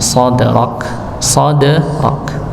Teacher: menebalkan huruf sa bukan dengan memonyongkan bibir, tapi mengangkat pangkal lidah